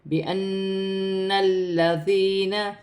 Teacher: نون مشدد میں غنہ کیا جائے گا، حمزہ کو نون کے ساتھ ملا کر پڑھا جائے گا غنے کے ساتھ، پھر لام مشدد کو نون کی حرکت کے ساتھ ملا کر پڑھا جائے گا، جیسے بِأَنَّ الَّذِينَ، یا ساکن سے پہلے زیر یا مدہ بن رہی ہے، اسے ایک الف کی مقدار کھینچ کر پڑھا جائے گا.